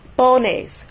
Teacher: stress is put on the po, not the nes, simply because it ends with an S. · the stress falls on the next to the last syllable, which would be po.